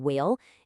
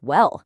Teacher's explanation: Instead of that two-part vowel sound you hear in whale, it got kind of flattened into a simple eh sound, which made it sound like well.